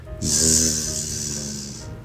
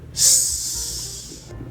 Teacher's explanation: Now the Z sound, which is the same as the S, but voiced, right? The Z is a voiced sound, so you vibrate your vocal cords.